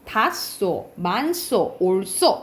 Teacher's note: 받침 히읗 뒤에 시옷이 되면 쌍시옷이 돼요.